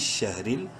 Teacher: را کو باریک پڑھیں گے زیر کی وجہ سے، عنش شہریل۔